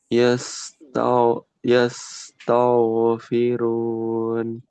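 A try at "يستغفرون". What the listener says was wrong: Masih tebal. Yes, ta. Coba sampai situ. Nah, kayak gitu tetap nanti ketika disambung. Yes, tau, firun.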